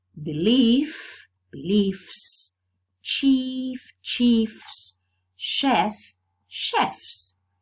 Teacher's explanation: some forms maintain this voiceless f and then there's no change